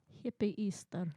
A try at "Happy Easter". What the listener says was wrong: Hippie. Sounds like you're saying hippie Easter. Is that it? Happy Easter. Hippie Easter.